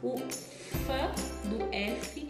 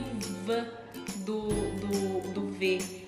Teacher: apesar de toda a boca, a língua, tudo ficar de forma igual, idêntica, a única mudança vai ser a vibração das pregas vocais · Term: surdas e sonoras